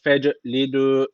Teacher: Feclidü cim harfi cezim almış. O zaman burada kalkale tecviti var. Birazcık vurguluyoruz.